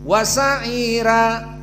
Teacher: dibaca dengan tarqik wasaira karena dia Ro yang sebelumnya kasrah